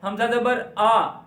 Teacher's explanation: پہلے حمزہ کی وا نکالنی ہے حلق سے نیچے سے